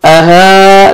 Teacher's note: الف مدہ، ایک الف کے برابر 1 سیکنڈ آپ نے کھینچنا ہے